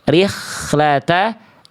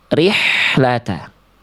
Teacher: Jadi kalau H kecil itu, Bunda, dia dilafalkan dari bagian tengah tenggorokan. Karakternya berbisik. Ya, nafasnya mengalir berbisik.